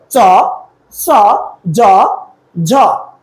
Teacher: এই 4টা ধ্বনির সময় জিহ্বা উপরে চলে ঘষা খায়, এই জন্য এই 4টা ধ্বনিকে বলা হয় ঘৃষ্ট ধ্বনি